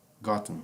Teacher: Aqui, novamente, o fonema da letra E você abole, tá? Então fica gotten, ok?